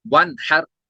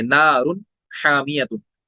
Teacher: यहाँ पे नून साकिन के बाद हा आ रहा है, तो हम नून को क्लियरिटी के साथ अदा करेंगे, इजहार करेंगे।